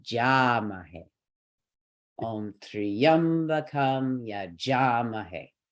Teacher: ja would be considered a heavy syllable. That'll take our stress.